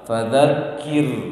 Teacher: Kemudian ro-nya tidak boleh berhenti, jangan terhenti dia, tapi digetar.